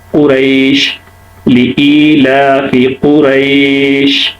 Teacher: وہ ہے جیسے قریش، قریش، شین کو دیکھیں، شین میں کیا ہو رہا ہے کہ آواز میں نرمی ہے، آواز جاری رہتی ہے لیکن نرمی کے ساتھ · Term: رخوت